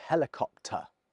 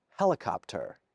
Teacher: speakers of so-called general American English, just as an example, do pronounce the R.